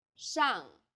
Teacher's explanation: a final 昂 and a fourth falling tone